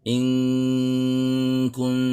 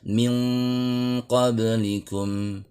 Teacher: Perbedaan suara ikhfa qaf dan kaf ada di ketebalannya.